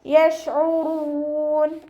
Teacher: യശ്ഉറൂൻ ഷീന് കൽക്കലയുടെ ലെറ്ററിലാത്തത് കൊണ്ട് ഹാഫ് സുക്കൂന് കൊടുക്കുക. അയനിൻ്റെ മഖ്റജ് വസത്തുൽ ഹൽക്ക്, തൊണ്ടയുടെ മധ്യഭാഗം. സൗണ്ടിനെ ഹംസയായി പോവാതെ ശ്രദ്ധിക്കുക.